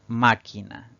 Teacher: al pronunciarla la mayor fuerza de voz recae en la antepenúltima sílaba contando de derecha izquierda Entonces es una palabra esdrújula y debemos